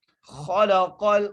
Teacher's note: خا کو موٹا کر کے پڑھیں گے، لام کے اوپر زبر ہے، قاف کو لام سے ملائیں گے اور قاف کو موٹا کر کے پڑھیں گے